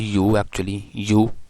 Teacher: front part of the tongue will touches at the palatal position. So for example, when we say the word you, actually you, so actually the first consonant y is at this position. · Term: palatal sounds